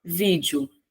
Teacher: Sílaba tônica é a penúltima, ou seja, eu tenho uma palavra paroxítona.